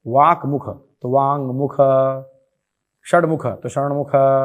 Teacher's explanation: इसे भी अनुनासिक हो जाएगा, यानी वर्ग का पंचम हो जाएगा, अपने वर्ग का 5वां हो जाएगा। जैसे वाक मुख तो वांग मुख, षडमुख तो षणमुख, ऐसे हो जाएगा।